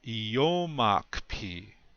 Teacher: the accent is still on the second syllable